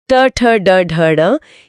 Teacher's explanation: यह मूर्धा यानी कठोर तालू से उच्चारित होते हैं। इसमें जीभ उल्टी होकर झटके से गिरती है। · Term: मूर्धन्य व्यंजन